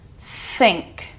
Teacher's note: There's not much going on in the back of your throat or your vocal cord area. It's more just air movement.